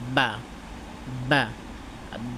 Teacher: বা বা পা উচ্চারণ করতে দুই ঠোঁট একসাথে মিলবে, ঠিক আছে, বাতাসটা বন্ধ হবে।